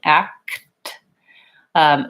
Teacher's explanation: so for k2t basically I have to sequence those sounds where the K is a back sound and the T is more of a front sound so for the K the back of my tongue is lifting